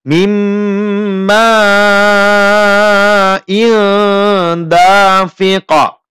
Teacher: Kita baca dengung dan ditahan 2 harokat.